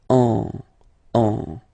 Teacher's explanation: you don't hear, sorry, any N in my pronunciation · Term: nasal